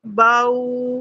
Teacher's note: تو یہ با کا جو زبر والا ساؤنڈ ہے وہ بھی آ رہا ہے، اور او او یہ واو لین کا ساؤنڈ ہے